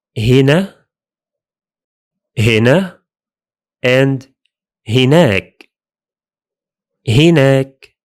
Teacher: In Egyptian Arabic, the forms are very close to the original ones. The main change is that the initial ضمة becomes كسرة.